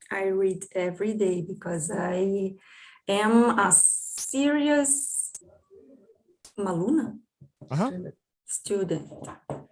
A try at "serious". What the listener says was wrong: That was an absolutely perfect pronunciation of serious.